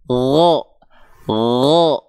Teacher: Huruf ghain. Huruf ghain ketika dia berharokat fathah kan nggak dibaca gha, nggak dibaca dengan vokal A, tapi dia condong pada vokal O